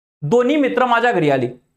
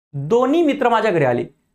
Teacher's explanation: पहिल्या ठिकाणी मी ह चा उच्चार केला होता दुसऱ्या ठिकाणी ह चा केला नव्हता